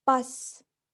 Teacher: A in bus is an open mid-back unrounded vowel, which is also the lowest of the central vowels.